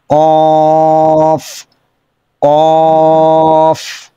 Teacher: কফ মুখ ভরে আওয়াজটা বের করবো মোটা আওয়াজে যেবার গোড়া উপর দিকে টান করবে কফ কফ আচ্ছা দেখি তারপরের